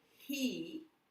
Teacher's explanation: the vowel is at the end of the syllable so you get to say it nice and long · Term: long sound